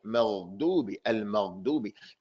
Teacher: the ghain just has sound, no air. You have to use a little bit more pressure to stop the air.